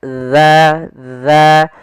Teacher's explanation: Jangan sampai dibaca dengan huruf zai, karena di sini ia bukan huruf zai tapi huruf zal. Ujung makhrajnya agar sempurna adalah kita sesuai makhrajnya, yaitu ujung lidah kita menempel dengan gigi seri atas.